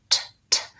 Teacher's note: When I say the T, my tongue pushes on the alveolar ridge and then releases. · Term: T sound